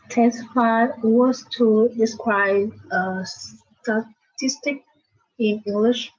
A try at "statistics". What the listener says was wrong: Statistics. Have to remember to say the S on the end. Statistics.